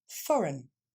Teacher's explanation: Ce E-I-G-N va simplement se prononcer un.